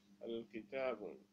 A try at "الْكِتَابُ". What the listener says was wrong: Not tanween. Al kitabu dhamma. At the end dhamma. Al kitabu. Yes, we cannot use tanween. If we use tanween, it is a mistake.